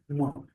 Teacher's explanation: इसका उच्चारण करते वक्त नासा से हमें हवा बाहर निकालनी पड़ती है या नासा इस अवयव की सहायता लेनी पड़ती है। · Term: अनुनासिक वर्ण